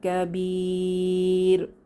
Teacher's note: কাবির তিন আলিফ টেনে ওয়াকফু করবো